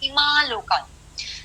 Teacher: सो मैंने से ईमा लोकान में एक ही बार में आकार का उच्चार कर रही हूँ और उसी समय उस अनुनासिक का उच्चार कर रही हूँ। बेसिकली मैं अनुनासिक आकार का उच्चार कर रही हूँ।